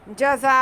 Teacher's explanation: एक ही लफ्ज़ में हमारे पास अलिफ मद्दा के बाद हमज़ा आ रहा है, तो यहाँ पे मद मुत्तसिल होगी